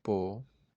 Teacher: la o y e son vocales abiertas, eh, no se pueden juntar, se tienen que separar